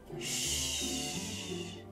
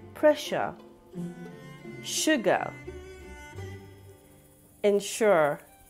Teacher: how you would tell a child to be quiet sh so this is an unvoiced sound which means no vibration in the throat